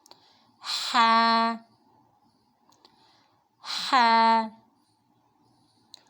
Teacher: ہا جو ہے حلق کے درمیانی حصے سے ادا ہوگا، اس کی ادائیگی کے وقت ہم بہت خیال رکھیں گے، اس کو ہا نہیں بلکہ ہے ایسے ادا کریں گے۔ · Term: وسطی حلق